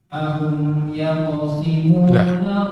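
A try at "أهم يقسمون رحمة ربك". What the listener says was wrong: Sin, bukan sad. Yaqsimuna.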